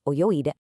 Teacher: instead of changing to ite, it changes to its voiced partner, ide. So oyogu, to swim, becomes oyoide.